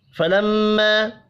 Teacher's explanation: میم مشدد پر غنہ کریں گے، چھوٹی مد کو 3 الف کے برابر کھینچ کر پڑھنا ہے